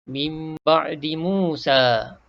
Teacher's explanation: Hukumnya iklab. Kita pun tukarkan sebutan nun mati ni kepada mim mati beserta dengung.